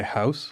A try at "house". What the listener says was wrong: House. I think you're saying it Canadian. House. I would probably say house. And Canadians say house.